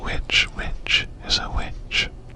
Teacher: It was understood that the first sound was voiceless, but now we very often voice WH and say it like any W, so you can't tell which is a which